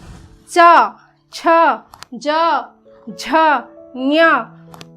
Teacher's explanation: कठोर तालु तथा जीभ की सहायता से जो ध्वनियाँ उच्चारित होती हैं वे क्या कहलाती हैं, तालव्य ध्वनियाँ कहलाती हैं।